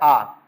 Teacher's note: जिस स्वर के उच्चारण में मुख सर्वाधिक खुलता है वो है आ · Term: विवृत स्वर